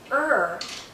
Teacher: when I say her the central part is going up because the tip is curling back